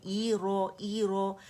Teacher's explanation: حمزہ کو اقص الحلق سے ادا کریں گے، ای رو. ای کو مد نہیں بنانا، تو ای ساؤنڈ جو ہے نا انگلش لیٹر ای، حمزہ کو کیونکہ کسرہ کو کیسے پڑھا جاتا ہے، ای کی ساؤنڈ کے ساتھ.